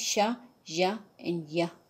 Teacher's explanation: So palatal means sha, ya, and ya. Middle of the tongue against the hard palate.